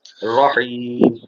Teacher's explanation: ہا پر جو ہے ذرا زور دے، حلق کے درمیان